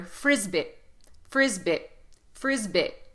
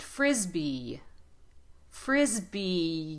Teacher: syllable and drag the vowel at the end so not uh the vowel e is a very long vowel all the vowels are long in English but e is especially long it has a y Shadow at the end · put a lot of emphasis on the first syllable and drag the vowel at the end so not uh the vowel e is a very long vowel